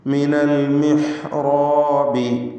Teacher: റായിനും അതിൻ്റെ ദീർഘാക്ഷരമായ അലിഫിനും തഫ്ഖീം കൊടുത്തുകൊണ്ട് സ്വരഭാരത്തോടെ തടിപ്പിച്ച് ഉച്ചരിക്കുക.